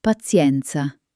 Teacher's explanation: Did you notice how the T in patience becomes a sharp ts sound in pazienza? That's the little Italian twist.